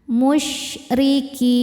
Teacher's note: huruf ra dibaca tarqiq karena berbaris kasrah. Cara bacanya ra ditipiskan